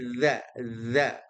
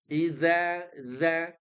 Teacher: Kuncinya adalah ujung lidah ya, ujung lidah bertemu dengan gigi seri atas.